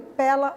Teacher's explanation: na forma de falar o som do e continua aberto